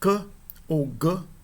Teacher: Quando a parte de trás da língua toca o céu da boca, quando nós vamos pronunciar c ou g, né, a parte de trás da língua está tocando no céu da boca e depois há um relaxamento e o som é proferido